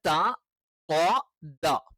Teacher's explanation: ഈ തായും ദായും ഉച്ചരിക്കുന്ന സമയത്ത് നാവിന്റെ മധ്യഭാഗം മുകളിലോട്ട് ഉയരില്ല.